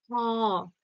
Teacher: এবং হটা কি হচ্ছে, কণ্ঠনালী থেকে বেরোচ্ছে, তাই না? বাতাসটা বা শ্বাসবায়ুটা কণ্ঠনালী থেকে বেরোচ্ছে। কোথাও বাধাপ্রাপ্ত হচ্ছে না, বা জীব কোনো স্থানে গিয়ে স্পর্শও করছে না। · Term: কণ্ঠনালীয়